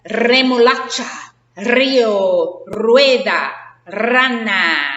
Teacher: if it comes at the beginning of a word, it rolls it. You got to make your tongue vibrate